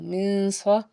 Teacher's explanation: میم نون زر من، سا زبر سا، من سا، اخفا کا قاعدہ، آواز کو ناک میں چھپائیں گے کیونکہ نون ساکن کے بعد سا آ گیا